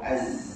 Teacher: Sebab huruf zai, makhraj dia hujung lidah dekat belakang gigi bawah.